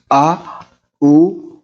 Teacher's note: जब आप उच्चारण करेंगे इनका तो जीभ का पीछे का हिस्सा उपयोग में आएगा जब आप इनका उच्चारण करेंगे तब। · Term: पश्च स्वर